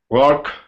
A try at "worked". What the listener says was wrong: Worked. Worked. So work with a little t at the end. Worked. Worked. Not worked, but work. The K sound.